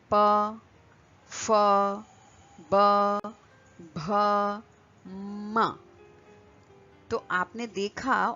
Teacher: This is spoken with the help of lips.